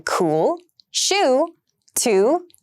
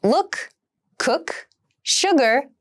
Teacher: uh is the sound in look cook sugar and other words ooh and uh are both high back vowels